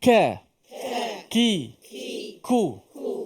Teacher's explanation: kemudian huruf Kaf bahagian depan wkuru Cuba sebut ka k ku ada sedikit angin tapi tak boleh banyak